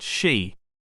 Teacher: voiceless palatal alveolar sibilant